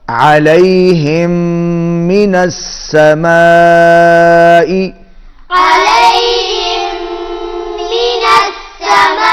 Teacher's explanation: بڑی مد ہے، کھینچ کے پڑھیں گے، میم پر غنہ ہوگا